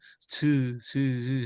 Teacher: 바람 소리만 나오지 목청이 울리지 않아요